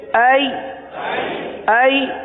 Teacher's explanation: ای حرف لین ہے، یا لین ہے، لہذا نرمی کے ساتھ پڑھیں گے